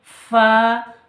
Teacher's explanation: উপরের দাঁত নিচের ঠোঁটে লাগিয়ে উচ্চারিত হয়